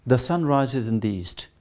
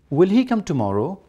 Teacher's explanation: So when you want to use a tone for question form, it must be the rising tone. In statement, it is falling.